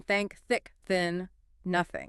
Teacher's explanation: Unvoiced, just blow air through your teeth. Think, no vibration. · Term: theta